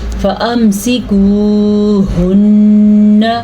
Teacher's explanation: میں نے پھر سے غنہ کیا اور نون کو لمبا نہیں کرنا